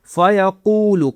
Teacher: قاف کو موٹا کرنا ہے اور کھینچنا بھی ہے